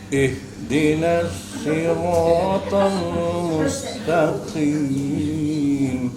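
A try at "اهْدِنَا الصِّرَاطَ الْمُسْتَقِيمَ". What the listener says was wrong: Nasnya tipisin lagi. Sekarang yang selanjutnya siratal sama seperti ta.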